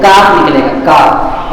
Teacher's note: زبان کی جڑ کاکڑے سے تھوڑا سا اوپر، کاکڑے کو نہیں لگانا، کاکڑے کے تھوڑا سا اوپر، یعنی اوپر کا جو تالو ہے اوپر کے تالو سے لگائیں گے، وہ کاکڑے سے نہیں لگائیں گے تو کاف نکلے گا کاف.